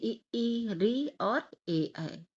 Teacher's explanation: जीभ का अग्र भाग काम करता है अग्र स्वर में